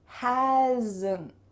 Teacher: Do you hear that little schwa sound added?